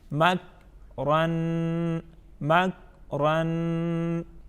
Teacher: کاف کو ہم ساکن پڑھیں گے اور اس کو تسلسل کے ساتھ پڑھیں گے